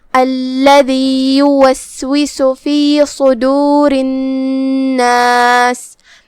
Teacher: را کے نیچے زیر ہے تو را کا حکم ہے ترقیق، مطلب ہم اسے ہلکی آواز میں ادا کریں گے